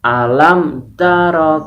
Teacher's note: membacanya adalah disuarakan dengan terang dan jelas tanpa berdengung dan bibir ditutupnya tanpa berdengung di bibir dengan mulut tertutup nya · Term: izhar syafawi